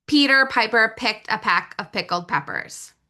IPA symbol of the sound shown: p